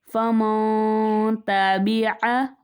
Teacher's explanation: اخفا کا قاعدہ ہوگا یعنی ہم غنہ کر کے پڑھیں گے۔ فمن تابع، غنہ کی مقدار ایک الف کے برابر ہوتی ہے، ایک الف کی مقدار تک آواز کو ناک میں رکھیں گے تو وہ غنہ کہلاتا ہے۔